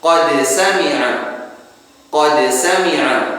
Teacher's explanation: Contohnya qad sami'a, dal dengan sin, makhrajnya berdekatan. Dal tarful lisan ma'a usul athanaya al-'ulya, sin tarful lisan ma'a ma baina athanaya al-'ulya was-sufla. Jadi makhrajnya berdekatan, maka harus kita izharkan.